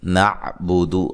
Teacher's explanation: عین کو واضح نکالنا ہے لیکن ہلانا نہیں ہے، بودو لمبا نہیں کرنا